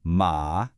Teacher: This one is a dipping tone. Your voice kind of starts in the middle, it drops down low, and then it scoops right back up. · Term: third tone